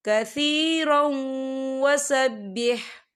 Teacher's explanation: تنوین کے بعد واو آ رہا ہے، اور واو جو ہے حروف یرملون میں سے ہے، تو یہاں پر ادغام ہوگا، تھوڑا سا غننے کے ساتھ پڑھیں گے۔